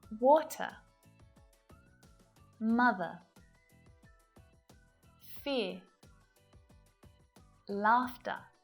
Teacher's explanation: we don't pronounce the R at the ends of words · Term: silent R